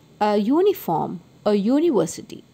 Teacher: the letter U is pronounced as EU, that is YU. So these words begin with Y sound.